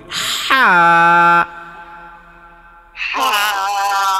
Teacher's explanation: এই হরফটা যখন উচ্চারণ করবেন তখন একটা চাপ সৃষ্টি হবে গলার মধ্যে গলার মধ্যখানে